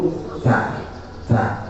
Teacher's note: bisa dibuktikan kalau tangan diginikan ada hembusan nafas. Dan memang suaranya berbeda. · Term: hams